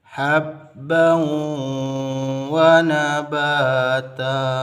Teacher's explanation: Lebur tanwinnya kepada waw dan diiringi dengan dengung. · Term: idgham bi gunnah